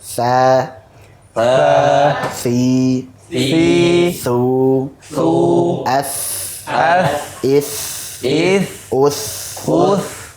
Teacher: Dan sifat-sifatnya adalah hamas, kemudian rakhawah, jadi tha ada aliran nafasnya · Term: huruf tha